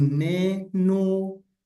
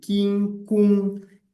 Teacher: But then if the vowel is u or o, both vowels involve labialization, you can remove the labialization on the first syllable, leave it just staying with o, e, or u, e.